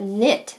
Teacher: That's a word that starts with K but sounds like N at the front. You only hear the N.